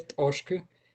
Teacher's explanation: tienen una consonante velar en la segunda posición en la segunda sílaba, ya sea sonora o sorda